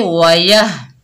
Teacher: या के ऊपर जबर, आगे हा साकिन है, या को हा से मिलाएंगे